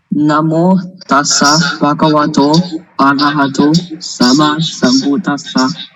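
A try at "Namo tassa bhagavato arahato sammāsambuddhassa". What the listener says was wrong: I hear it short. No way. See if you can make it long. Like when you say blue, you don't say blue. You say blue, right? So in the same way you say Namo, all right? You cannot say Namo. Doesn't work. Arahato is wrong. It needs to be Arahato, Bhagavato. All right? You need to add there the length. Otherwise, it's not right.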